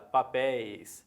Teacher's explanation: Na palavra papéis, mesmo no plural, é a última, está em posição de oxítona. Então, papéis eu acentuo, ideia não.